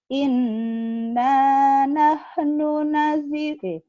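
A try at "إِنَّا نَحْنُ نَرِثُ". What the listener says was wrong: Narisul, bukan najisul, narisul. Cuman lagunya ini jadi kayak ketekan ya.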